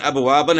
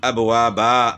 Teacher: دو زبر وقف میں ایک زبر اور بعد میں ایک الف پڑھا جائے گا، یعنی ابوابن ہے تو وقف ابوابا، با الف زبر با ہو گیا، تو دو زبر الف سے تبدیل ہو گئیں تو با الف زبر با ہو گیا۔